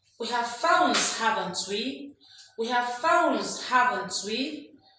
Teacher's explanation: The fourth use of the rising tone is for tag questions.